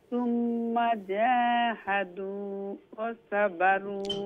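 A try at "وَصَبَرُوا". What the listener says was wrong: ওয়া সাবারু সাটা সিনোর সাউন্ড হলো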